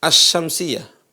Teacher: sukun sekarang ini lam sukun Al berkaitan dengan lam sukun ya bunyinya hilang bunyi lamnya hilang seolah-olah nggak ada dan masuk ke huruf berikutnya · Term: Al idgham